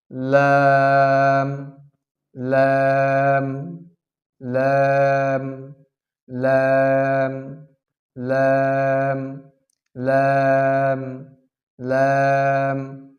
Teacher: লাম হরফের মাখরাজ হচ্ছে জিহ্বার আগার কিনারা সামনের উপরের দাঁতের মারি হইতে · লাম হরফটি পাতলা করিয়া এক আলিফ টানিয়া পড়িতে হয়